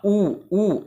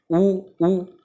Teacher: जब ऊ बोलेंगे ना आप, ऊ तो जो आपके दोनों होंठ हैं आपस में टकराते हैं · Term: ओष्ठ वर्ण